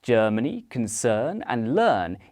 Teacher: The vowel in the words Germany concern and learn is called the nurse vow and it's made with the lips relaxed. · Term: nurse vowel